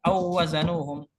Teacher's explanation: Awazanuhum waw di sini makhrajnya syafatain, bukan makhraj jauf, karena bukan huruf mad, ini huruf lin. Huruf lin ini wawnya masih waw syafatain, dan waw kedua juga syafatain, maka hukumnya kembali ke hukum asal yaitu idgham.